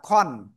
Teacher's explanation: সবসময় আবার আন হবে না। যেমন খ দুই জবর খান হয় না, খন।